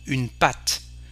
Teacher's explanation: Here, for a museum, un musée, so we pronounce E, but we don't pronounce the E. Une pâte, we pronounce the consonant T, but we don't pronounce the E